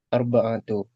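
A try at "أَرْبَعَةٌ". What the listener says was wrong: Arba'atun dengan tanwin ya.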